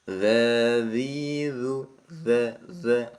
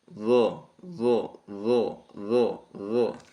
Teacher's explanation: Jadi kalau dza itu kan turun ya turun Tengah lidah kalau do ya naik ya d d d dza kalau do naik do do do